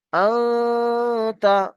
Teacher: Direct তা বললে কিন্তু ভুল হবে, ডাইরেক্ট তা বলবো না, নাকে চেপে গুণনা করতে হবে।